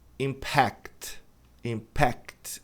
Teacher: Aí a tônica tá na última sílaba